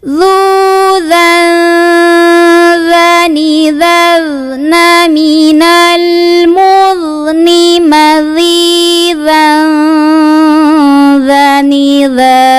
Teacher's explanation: Jadi saat membunyikan tanwin, kita sudah siap-siap ke makhraj dzalnya, sudah siap-siap mempertemukan ujung lidah dan ujung gigi seri atas. Dzadzi dzubal, dzuzan dzani dzazna minal mudni madzidzan dzanidza.